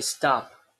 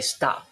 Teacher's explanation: You can say stop without an aspiration for the final P, but you can also say stop, right? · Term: free variation